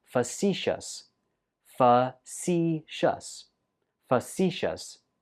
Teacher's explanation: Stress goes on the 2nd syllable.